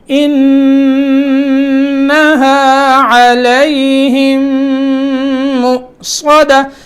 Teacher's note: تو میم مشدد کے ساتھ میم ساکن جب ملی تو ایک میم پڑھی جائے گی، لیکن آپس میں ملنے کی وجہ سے شد پیدا ہوئی، وہاں غنہ ہوگا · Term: ادغام غننے کے ساتھ